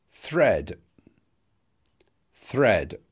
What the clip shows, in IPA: θred